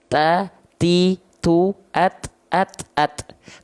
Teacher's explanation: Ujung lidah disentuhkan dengan pangkal gigi seri atas. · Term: huruf ta